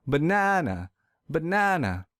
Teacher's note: I will stress the second syllable real hard